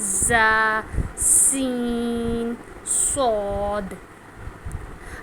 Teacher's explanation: جب بھی ہم اس کو ادا کرتے ہیں تو ہمیں سیٹی کی آواز آتی ہے